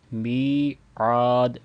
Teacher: میم کے ساتھ یا مدہ ہے تو اس کو 2 سیکنڈ لمبا کریں گے، پھر آگے عین کے ساتھ بھی الف مدہ ہے، اس کو بھی 2 سیکنڈ لمبا کر کے پڑھیں گے، میعاد۔